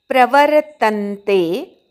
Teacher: प्र नंतरच्या व वर आघात येतो